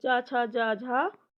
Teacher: ये कहां से बोले जाते हैं यह तालू से